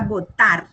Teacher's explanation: cuando de la palabra votar, la acentúo en la última sílaba, lo que está en rojo no lleva tilde, pero hago ahí el mayor acento, lo hago en la última sílaba. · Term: sílabas tónicas